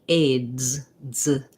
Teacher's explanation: And then when I add my Z, aids, z, it drops down into the Z position, and then it can continue a little bit. We might, if I'm saying he aids me a lot, aids me, I am using a Z there, but it does end up sounding like a light, short S.